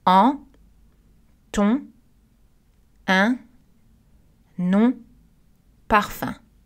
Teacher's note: Regardez la première liste, nous avons des voyelles nasales parce que N et M sont à la fin du mot. Les N et M ne sont pas prononcés.